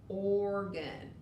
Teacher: when o is next to the r we really just hear the r we don't hear the o but organ does begin with an r onion is another tricky